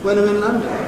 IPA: w.ə.n ə.m ɪ.n l.ʌ.n.d.ə.n